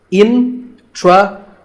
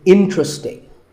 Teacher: there are only 3 syllables, in-tra-sting, and the stress is on in, so the word is interesting.